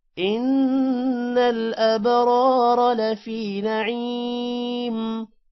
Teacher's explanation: نعیم عین کے بعد یہ ہے لمبا کریں گے